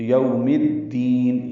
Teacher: یوم میں ہونٹ کول کریں گے، آگے کی جانب لائیں گے، میم کی زیر کو الدین کی دال سے ملا دیں گے · یہاں پہ میم کو دال سے ملانا ہے تو الف لام نہیں پڑھا جائے گا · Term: ادغام شمسی